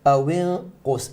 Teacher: make it ghunna mufakhama because of the qaf